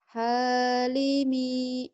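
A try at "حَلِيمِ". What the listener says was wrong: Hanya pendek. Mi-nya pendek. Halimi.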